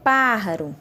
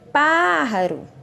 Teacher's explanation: A sílaba que eu pronunciei com mais intensidade foi pá. Então, ela é a sílaba tônica.